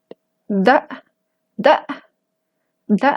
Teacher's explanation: está haciendo mi laringe ahí se pone más tensa porque es el tono alto